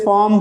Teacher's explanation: When after R consonant come, so then we should not pronounce the R.